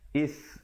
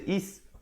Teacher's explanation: Is hamzah baris bawah bertemu sa di hujung lidah